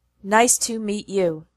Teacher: the pattern in the sentence nice to meet you is strong weak strong weak